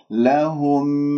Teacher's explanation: لهم، الهاء مضمومة نضم الشفاه فيها، الميم مظهرة، لهم لا، أسمع الميم المظهرة لأنه مخرجها شفوي وخيشومي ، لا تقطع صوت الميم المظهرة، لا، ولا تقول لا تفسدوا،